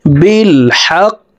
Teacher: এই কফ কলকলার হরফ উপরের দিকে ধাবিত করে ধাক্কা দিয়ে কফকে সাকিন করে ফেলবো। বিল হক, উচ্চারণটি এভাবে করতে হবে, বিল হক।